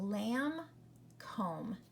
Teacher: The B is silent. You hear the M.